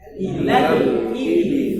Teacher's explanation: Aslinya kan ila panjang. Ada mat di situ. Tapi ketemu sukun, maka dia dibuang matnya. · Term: takhallus bil hadfi